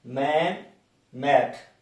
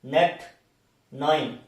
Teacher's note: These are nasal sounds, M and N, these are nasal sounds.